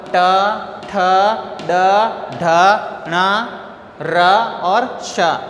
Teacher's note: मूर्धा से होते री, बड़ी री, ट वर्ग, ट, ठ, ड, ढ, ण, र और श। इनका उच्चारण स्थान मूर्धा होता है, इसीलिए इनको मूर्धन्य भी कहते हैं।